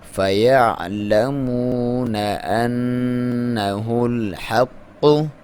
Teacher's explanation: نون کے اوپر غنہ کرنا ہے، دبا کے پڑھیں گے ، اور قاف کے اوپر شد ہے تو دبا کے پڑھیں